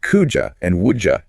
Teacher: that D plus Y often makes a J sound